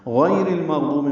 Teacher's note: یا کو نرمی سے پڑھیں گے، را باریک پڑھیں گے